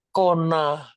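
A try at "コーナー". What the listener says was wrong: Kona. Panjang ya. Kona. Karena dari bahasa Inggris kan. Corner. kona.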